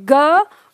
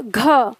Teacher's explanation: ग की तुलना में घ में ज्यादा हवा निकल रही है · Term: महाप्राण